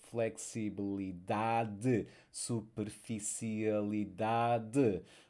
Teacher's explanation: And word stress, you see that we are stressing the next to last syllable in Portuguese.